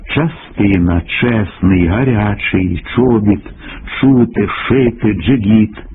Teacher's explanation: шиплячі приголосні в українській літературній мові загалом тверді набагато твердіше ніж у російській мові